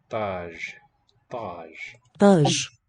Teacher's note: This is an emphatic T, darkens the A.